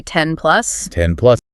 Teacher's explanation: So very often that N sound changes into an M sound, which is also made with the lips.